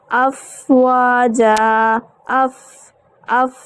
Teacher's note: یہ جو سانس جاری رہ رہی ہے لیکن آواز جو ہے وہ کم ہو گئی ہے، اس کو ہمز کہا جاتا ہے. اور اگر ان کی ادائیگی کی بات کروں تو ان کو ادا کرتے وقت کیا ہوتا ہے کہ مخرج میں آواز جو ہے وہ معمولی سی ہوتی ہے، کمزور ہو کے ٹھہرتی ہے، لیکن سانس جو ہے وہ جاری رہتا ہے، اس وجہ سے اس کو ہم ہمز کہتے ہیں.